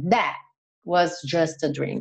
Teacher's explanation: Esse T do that, do final, você quase não escuta, ele dá uma cortada mesmo